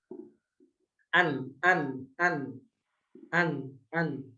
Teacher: Kalau nun ujung lidah ditempelkan ke gusi bagian atas.